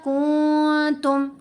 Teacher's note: تو ہم نے پڑھا کنتم، غنہ کیا، نون کو خفیف کر دیا، کمزور کر دیا، چھپا لیا